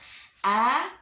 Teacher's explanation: Huruf a keluarnya dari tenggorokan bawah.